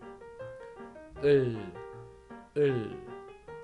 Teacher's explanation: when you pronounce Korean alphabet ul sound, the tongue tip doesn't touch the upper teeth, but slightly behind your upper teeth, the hard part of your palate.